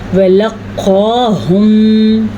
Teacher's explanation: موٹا قاف ہے، اس کو پر پڑھیں گے اور کھڑی زبر کی ادائیگی ضرور کریں گے